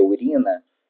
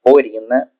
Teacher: troca de U por o por se considerar que a pronúncia u é decorrente de fechamento indevido da vogal então por exemplo ao invés de ser urina se produzir orina